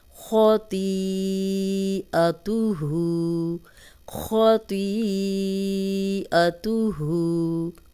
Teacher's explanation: حمزہ بیچ میں آ گیا، حمزہ زبر ا، تو اس کو ہم 4 حرکات لمبا کر لیں گے